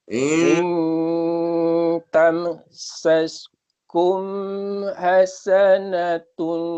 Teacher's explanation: Tam tak nak dengung. Ada tanda mati, matikan. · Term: izhar syafawi